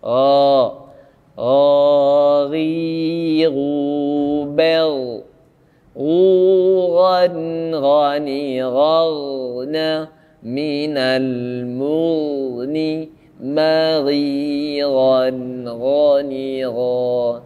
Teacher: Ghain tidak bernafas, kha bernafas. Dua-duanya dari tenggorokan atas. Ingat, ghain tidak tertahan suara. · Ingat, ghain tidak tertahan suara. Dia suara keluar plong.